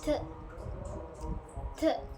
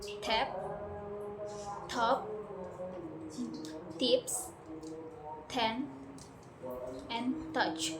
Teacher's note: Your tongue touches the alveolar ridge and then release a burst of air without using your vocal cords.